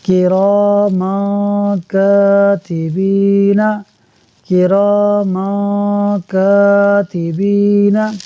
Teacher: میم پر دو زبر کی تنوین کے بعد کاف حروف اخفا میں سے ہے، اخفا ہوگا، یعنی ہم غنہ کریں گے تو ہم پڑھیں گے کراما کاتبین، کراما کاتبین۔